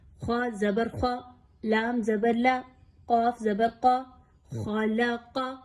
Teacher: تینوں کی مقدار کو ایک جیسا رکھیے، خا کو ایکسٹرا لمبا یا لام کو کم لینتھ میں نہیں پڑھنا۔ بہت سے لوگ اس طرح سے حرکات کو بیلنس نہیں کر پاتے، جب ایک ہی حرکات ایک ساتھ 2-3 حروف پر آ جاتی ہیں تو آپ نے یاد رکھنا ہے کہ یہاں پہ تینوں حروف کو ایک جتنی لینتھ میں پڑھنا ہے۔